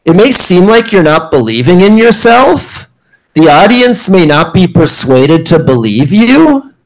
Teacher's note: You'll notice with all those statements, I ended those statements with a rising tone. And it sounds like a question. When we ask a question, we end with a rising tone.